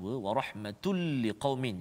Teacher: tul liqaumin itu masukkan lantunan tun itu, tanwin tu, ke dalam huruf lam tanpa dengung. Jadi seolah-olah hilang bunyi tanwin tu. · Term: idgham bila gunnah